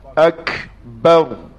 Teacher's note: Ra tafkhim. Ra tebal. Muncung mulut sikit.